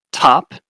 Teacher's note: top is a t that's aspirated